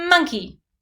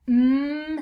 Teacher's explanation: my lips are together and i'm making that mmm sound because that's the first sound in monkey